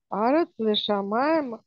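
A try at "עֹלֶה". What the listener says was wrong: Ну, здесь, смотри, здесь не Арат, а Эрат.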